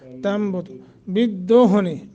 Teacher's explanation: نون کو میم سے بدل کر کے پڑھیں گے